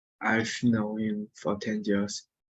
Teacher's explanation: So for in conversation becomes fa. You pronounce it fa.